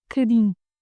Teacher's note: But a lot of you say bocadinho. Now, in real Portuguese, we'd even skip that first O and say cadinho. But the A stays, closed and all.